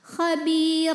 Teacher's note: dan rnya jika berhenti ada ada madnya namanya mad mad iwad sebab ada baris tanwin fathah yang diwaakafkan cara bacanya baris duanya jadi satu jadi fathah dan panjangkan dua harakat